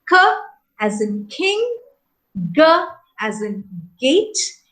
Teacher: involve the veilum or the soft palate so what happens is the back of the tongue is raised towards the soft palate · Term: bailaric sounds